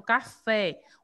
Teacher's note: O fé é a sílaba mais forte. Eu classifico como oxítona.